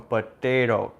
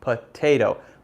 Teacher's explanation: It's the slightly rolled up d instead of t.